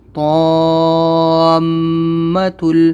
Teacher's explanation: یہاں پر میم کے اوپر غنہ ہوگا کیونکہ تشدید ہے